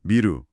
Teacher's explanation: 일본어에서는 역시 두 입술을 사용하는 비음인 무로 바뀐 거죠. 입술을 쓰는 방식이 비슷해서 그렇군요.